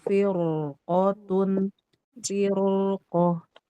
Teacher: Huruf isti'lanya qafnya fathah. Maka dia tidak ada perbedaan pendapat di kalangan ulama bahwa firqoh itu dibaca tebal.